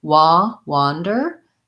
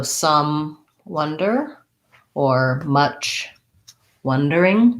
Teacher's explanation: wander is rounded that aw wonder is more central and um no rounding